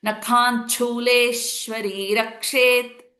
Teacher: There is a Le is a dirgham with the Shwa Sanyuktakshara. So Le becomes a little longer. Sh will be with a little bit of hold or stress on it.